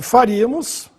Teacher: Mais uma vez, proparoxítona, sílaba tônica no ri, agudo no i.